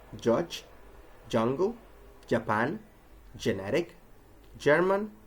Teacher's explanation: If we add voicing, CH becomes J.